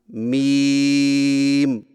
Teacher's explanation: होठों के खुश्क हिस्से को कदर नरमी से मिलाकर बारीक आवाज में पढ़े